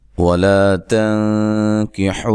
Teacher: یہاں نون ساکن کا اخفا کریں گے مع الغنہ